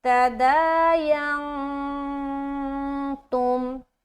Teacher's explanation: نون ساکن کے بعد تا ہے تو لہٰذا یہاں پر کیا کریں گے؟ اخفا کریں گے، کیونکہ یہ تا حروف اخفا کے جو 15 لیٹرز ہے اس میں سے ایک ہے، لہٰذا یہاں پر ہمیں اخفا لازمی کرنا ہے.